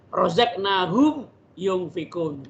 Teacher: Izhar. Dia harus dibacanya tetap jelas karena mim mati bertemu dengan ya.